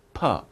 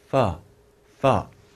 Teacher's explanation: F, your lips are not together. Your teeth are on your bottom lip.